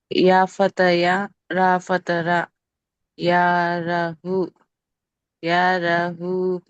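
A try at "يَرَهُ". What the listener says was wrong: Very good.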